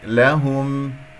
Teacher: همس لطيف جدا، الهاء مضمومة نضم الشفتين فيها من لهم